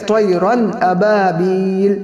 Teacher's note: تنوین کے بعد حروف حلقی کے 6 حروف میں سے حمزہ آیا ہے تو وہاں پر بھی گناہ نہیں ہوگا